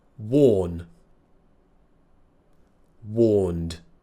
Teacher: it ends with an N voiced consonant so that means we will use the voiced D sound